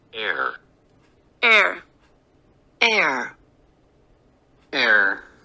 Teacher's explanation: 입의 모양을 bad 할 때처럼 입을 벌리지 않고 그냥 오므린 상태에서 소리를 내는 거